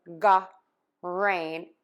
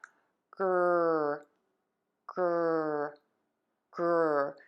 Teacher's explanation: GR GR GR I do close my lips slightly when I move to that r sound, and I move to more of a square tense lip shape. You do not want to add a sound between the g and the r. There is no vowel there. You do not want to say Ga rain it's just GR GR GR So you smoothly move from that g to that r sound. · There is no vowel there. You do not want to say Ga rain it's just GR GR GR So you smoothly move from that g to that r sound. Yes you can make the r sound with the tip of your tongue flipped back, but the key is do not touch your teeth for that r, and do not let your tongue move.